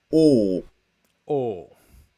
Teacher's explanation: so the tongue is sort of just higher than midlevel uh and the lips are rounded o and it's a steady state continuous vowel